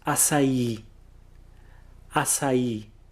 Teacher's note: the accent on top of the I at the end is actually there to tell you that that's the strongest syllable. That's where you're going to put the emphasis.